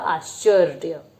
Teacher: very good तो आश्चर्य को अगर हम बोलते हैं तो इसमें आश्चर्य श को बहुत जल्दी से बोला जा रहा है तो श आश्चर्य श और च को एक साथ जोड़ के बोला जाएगा